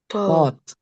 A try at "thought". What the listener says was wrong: Oh, masih ada T kedengeran. Thought. Ujung lidahnya belum keluar. Sekali lagi. One more time. Emang harus pembiasaan nih. Thought. Jadi bukan thought. Kalau taught itu artinya mengajar. Beda bunyinya tuh. Kalau taught itu huruf T, benar-benar huruf T. Kalau ini thought. Jadi untuk membedakan. Are you talking about taught, mengajar, or thought, pikiran? Itu jadi arti nanti apa? Penerimaan pendengar bisa berbeda nih.